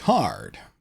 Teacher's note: a few un-Australian sounds, like the rhotic R, the hard R, especially near the end of words like hard